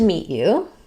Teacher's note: Okay, so when you're saying nice to meet you, you're going from a stop T, unreleased T, to the y sound